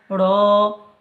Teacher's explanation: জিভের উল্টো পিঠ উপরের তালুর সাথে লাগিয়ে উচ্চারিত হয়